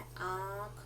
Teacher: चंद्र बिंदु जो लगता है उच्चारण के समय हमारे नाक और मुंह दोनों से होता है